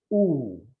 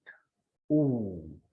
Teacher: When we pronounce this word, ooh, it comes from the back of our mouth.